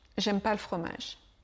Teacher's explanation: Le ne est pratiquement toujours oublié.